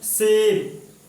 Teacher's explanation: जो हमारी जीभ है वो दांत और मसूड़े के पास आती है, तब जाके इस स की ध्वनि निकलती है